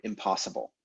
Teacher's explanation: the n assimilates to the following p and becomes m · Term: assimilation